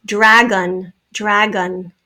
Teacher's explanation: second syllable spelled o is the schwa sound